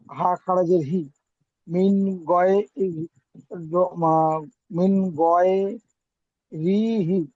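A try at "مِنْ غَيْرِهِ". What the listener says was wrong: আচ্ছা, হা খারাজের টান হবে না ভাই?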